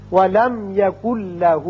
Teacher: نون ساکن کے بعد جب لام آ جائے تو وہاں ادغام تو ہوتا ہے لیکن غنہ نہیں ہوتا. اب نون نہیں پڑھا جائے گا، کاف کی آواز لام سے سیدھی ملے گی. یکن لہو پڑھیں گے. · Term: ادغام بغیر غنہ